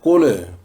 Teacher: ہمارے ہاں لام کو ہلا کر پڑھا جاتا ہے، جس سے اس پر بھی قلقلہ محسوس ہوتا ہے۔ مثلا قل هو اللہ احد میں قل کو قل پڑھا جاتا ہے، یہ غلطی ہے اور اسے بغیر ہلائے قل پڑھنا چاہیے، قل۔